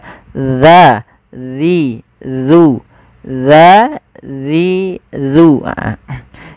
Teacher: ujung lidah kita menempelkan dengan gigi seri atas kita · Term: huruf zal